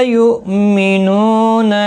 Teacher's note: یؤمنون حمزہ ساکن کو جھٹکی کے ساتھ ادا کیا جائے گا. مینو نو واو مدہ ہے، الا لا الف مدہ ہے، قلیلا لی یا مدہ ہے. تینوں کو ایک ایک الف کی مقدار کے برابر کھینچ کر پڑھیں گے. قاف مستعلیہ ہے پر پڑھا جائے گا.